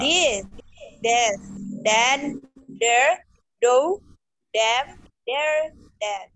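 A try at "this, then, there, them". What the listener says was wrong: Cuma nanti harus tetap bedakan dengan bunyi D nanti ya. D. Z. D. Z. D. Z. Beda tuh ya.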